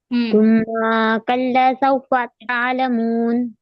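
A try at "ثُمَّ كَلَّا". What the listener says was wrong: میم پر زبر کی حرکت لگی ہے، ثم کلا نہیں، ثم کلا سوف تعلمون.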